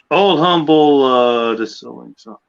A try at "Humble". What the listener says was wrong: It's Humble, not Humble. H is silent.